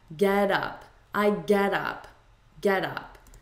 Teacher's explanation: in American English, when we have a T between two vowels, we turn it into a D.